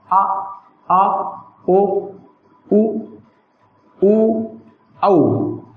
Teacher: ये पश्च स्वर कहलाते हैं, जो जिह्वा के पश्च भाग से बोले जाते हैं।